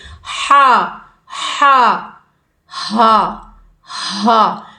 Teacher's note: ہا حلق سے ادا ہونا ہے، ہا گلے سے، گلے کے بالکل سینٹر سے، ہا ہا ہا ہا، یہ ہائے والی سینے سے ادا ہونے والا ورڈ ہے، بھاری ورڈ ہے یہ۔